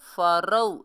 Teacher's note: रा वाव ज़बर रौ, ये वाव लीन है, नरमी से अदा करेंगे।